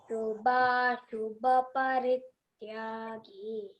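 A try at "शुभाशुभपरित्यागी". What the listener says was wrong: See here, Shubha is Mahapran, okay? Aspirated one. Shubha shubha parityagi.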